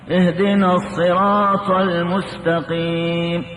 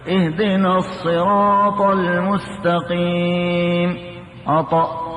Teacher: الطاء من الحروف المطبقة مستعلية، والدال من الحروف المستفلة ليست مطبقة، هذا الذي يميز.